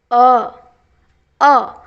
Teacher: कि हिंदी में अ स्वर केंद्रीय स्वर या मध्य स्वर है। इसके उच्चारण में जीभ का मध्य भाग थोड़ा सा ऊपर उठता है। अ बीच का जो जीभ का थोड़ा सा भाग है वो थोड़ा सा केवल ऊपर उठता है।